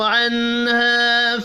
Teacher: نون ساکن کے بعد ہا ہے، اظہار حلقی ہوگا، غنہ نہیں کرنا۔